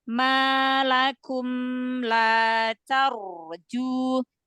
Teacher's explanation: Malakum jangan naik ya, jangan suaranya lurus ke depan, lempar ke depan.